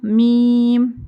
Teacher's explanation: میم دونوں ہونٹوں کو ملانا ہے تو میم ادا ہوگا, میم. نیکسٹ نون.